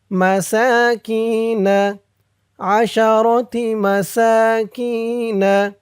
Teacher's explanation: মাসাকিনা কি এক আলিফ টান, জেরের পরে ইয়া সাকিন,